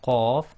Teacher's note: when you say the qaf, you block the throat and release the sound